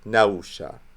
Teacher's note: So that would not be pronounced nafsha, it would not be pronounced napsha, it would be pronounced nausha. That P gets its fricative version, which is not generally an F sound. Although F is the proper fricative, it just gave way to the W sound.